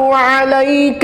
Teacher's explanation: علیک میں عین بہت احتیاط سے نکالیے گلے کے درمیان والے حصے سے